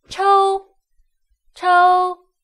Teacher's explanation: CHOU with the first tone, flat tone, is pronounced as chou, chou.